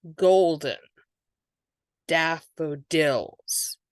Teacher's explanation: Daff and dills are getting the stress